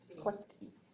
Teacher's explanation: So you're going to add an I, a low tone I at the end.